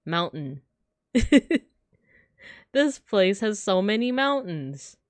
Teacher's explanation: the word mountain in my actual speech like when I'm saying it I don't pronounce the T